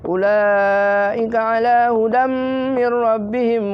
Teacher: Jadi tetap ada idgham tapi tetap ada gunnahnya, bergengnya. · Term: idgham bi gunnah